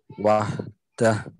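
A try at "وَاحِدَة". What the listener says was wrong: Wahidah. Wahidah. Bukan wahdah. Wahidah.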